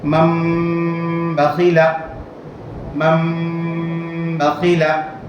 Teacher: تنوین نون ساکن کے بعد با آئے تو تنوین نون ساکن کو میم سے بدل کر گنہ اور اکفا کے ساتھ پڑھیں گے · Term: اقلاب